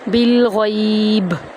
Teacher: اگر وقف کر رہے ہیں تو تب بھی ہم یہاں پر قلقلہ کریں گے با پر